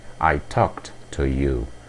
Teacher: Mais uma vez o verbo termina em K, então a pronúncia é T.